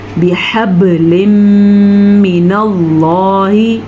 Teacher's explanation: با پہ کلکلا ہو رہا ہے کیونکہ با حروف کلکلا میں سے ہے اور با کے اوپر ساکن آیا ہے، اس لیے کلکلا ہو رہا ہے.